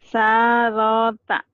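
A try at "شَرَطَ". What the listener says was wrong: Benar, tapi shinnya kurang angin. Sharota.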